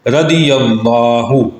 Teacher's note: یا کے اوپر زبر، اس کی وجہ سے آگے لام موٹا پڑا گیا